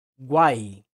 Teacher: As semivogais U e I quase não aparecem e o fonema que mais se destaca ali é a vogal A, ou seja, a vogal ficou entre as semivogais. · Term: tritongos